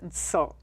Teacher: NSO with a glottal stop at the end